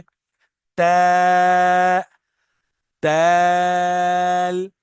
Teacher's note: जबान की नोक को ऊपर वाले दांतों के पीछे लगाना है